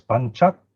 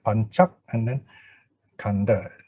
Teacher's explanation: So pan is pronounced as panchak. It's a glottal stop. No? That means you hold your breath there